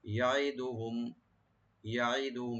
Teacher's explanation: শুধু আইনটাকে রাইট দিয়ে পড়বেন, ইয়াটাকে ওপেন করে, আর মিম সাকিন এখানে জাহার হবে।